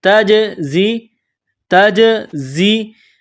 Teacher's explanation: زا میں سیٹی کی آواز پیدا کرنی ہے